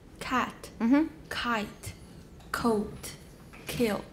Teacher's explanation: Velar stops become more front before more front vowels.